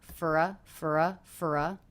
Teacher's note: reduced the vowel in the word for to the schwa, and we've connected these two function words together.